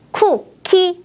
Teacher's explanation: 두 개의 음절 모두 바람을 많이 내보내면서 발음했어요.